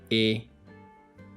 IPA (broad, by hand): e